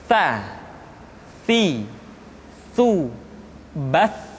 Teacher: atau lidah yang keluar terlalu panjang tsa jadi yang tepat adalah ujung lidah disentuhkan dengan dinding dua gigi seri bagian atas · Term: huruf Tsa